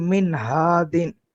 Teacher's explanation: ظاہر کر کے پڑھیں گے یعنی غنہ نہیں کریں گے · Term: اظہار